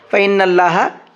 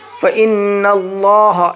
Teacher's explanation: اللہ کے لام کو موٹا کر کے پڑھیں گے، باریک نہیں پڑھیں گے، یہاں پر فَإِنَّ اللَّهَ نہیں پڑھیں گے بلکہ فَإِنَّ اللَّهَ اس طرح سے پڑھیں گے۔